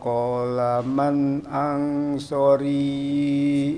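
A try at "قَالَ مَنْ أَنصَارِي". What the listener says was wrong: so juga panjang qala man ansori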